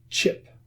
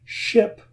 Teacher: many Spanish speakers substitute ch for sh. So ship becomes chip.